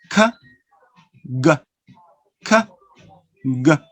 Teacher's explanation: they are produced in the velume, in the soft palate, the back part of your mouth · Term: velar sounds